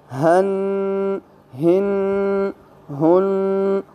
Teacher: ہ جو ہے یہ بھی حلق سے ہی ادا ہوتا ہے، لیکن جو سینے کی طرف آخر حصہ ہے وہاں سے